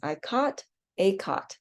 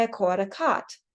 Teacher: Somebody from the East Coast might say, I caught a cot. And those would be 2 distinct vowels for them.